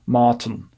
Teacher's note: He says Martin. And he pushes that I back a little bit in the second syllable. So Martin.